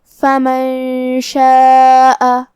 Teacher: کلمت فمن کے آخری میں نون ساکن ہے، پھر حرف شین ہے. کلمت شاء میں شین حروف الاخفاء میں سے ہے، تو ہمیں یہ حکم کو غنہ کے ساتھ ادا کرنا ہے · ہم اس مد میں اپنی آواز 4 مد کے برابر لمبی کریں گے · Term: مد واجب متصل